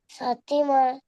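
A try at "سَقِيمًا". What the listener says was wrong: সাথী নয়, ওটা কফ। সাকিমা। কফের নিচে জের আছে। জাবার যেমন সাকিমা।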